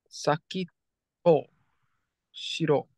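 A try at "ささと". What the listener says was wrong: It's not Saki. It does look like that, but if you look closely, it's Sasa. Sasa to Shiro.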